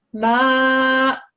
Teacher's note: it shouldn't sound like a hamza with a fatha on top. It should sound just as you read it there.